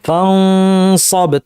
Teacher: ফানসাব ভারী করবেন কীভাবে, আওয়াজটাকে উপর ঠেলার মাধ্যমে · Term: ইখফার আওয়াজ